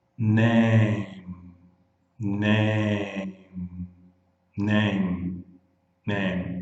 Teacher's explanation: Vai até o M. O M é bilabial em inglês.